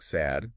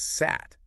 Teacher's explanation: the underlying form has that voice D but the rule changes it to a voiceless T